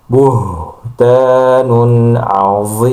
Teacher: Ketika mengucapkan buh ya beh itu dari pangkal tenggorokan. Jadi suaranya agak dalam karena memang makhrajnya ada di pangkal tenggorokan